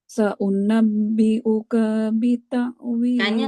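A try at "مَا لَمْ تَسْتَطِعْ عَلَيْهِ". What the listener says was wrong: Jangan panjang. Sa'unabbi'uka bita'wili.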